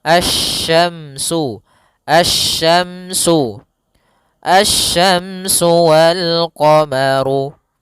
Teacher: Kita jabarkan lebih murah sedikit, yaitu asya dengan sya, shi. Maka di sini langsung ke huruf shin, makhrajnya dari tengah lidah kita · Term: alif lam syamsiyah